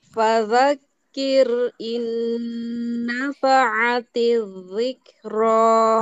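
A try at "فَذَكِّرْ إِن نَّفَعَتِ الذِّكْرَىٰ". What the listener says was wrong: Nah, hati-hati huruf dzalnya terasa menebal, ditipiskan. Fadzakir in nafa'ati dzikra. Jangan sampai fa'ati dzikra. Terlalu tebal. Coba dikurangi sedikit Bu.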